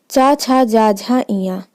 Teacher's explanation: ये आपका तालु, इसे हम तालव्य भी कहते हैं और तालु इसका उच्चारण स्थान है